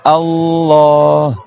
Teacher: il y a une shadda sur le L, donc il y a deux L, et le Ha, il est prolongé